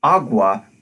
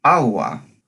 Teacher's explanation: the voiced velar fricative most closely resembles the English hard G which is a voiced velar stop